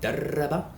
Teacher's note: And that really gets us most of the way to the rolled R sound that we have in words like darasa or rabb. But sometimes we need to sustain that rolled R when we have a shadda over it